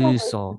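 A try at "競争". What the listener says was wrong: Be sure to do it long. Kyuso. Because kso is a swear word. So make sure to go kyuso.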